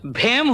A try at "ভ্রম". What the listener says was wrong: হেম নয়, ভ্রম, এটাতেও রফলা লাগবে।